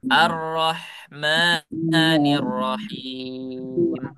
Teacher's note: Ma-nya jangan terlalu panjang ya. Dua harakat saja. Dua ketukan.